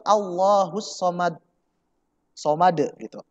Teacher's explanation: Pada ayat kedua sering sekali orang mengucapkan huruf shad di situ tipis. Shad kan tebal ya, bertasydid.